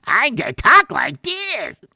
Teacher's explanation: i'm pushing it forward in my mouth and my nose all right so that's what's giving me that high pitch kind of crazy sound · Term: push forward your voice